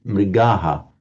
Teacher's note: Notice that with that shadow vowel, you get the mrigaha with a short a sounded at the end, sounded but never written for the visarga.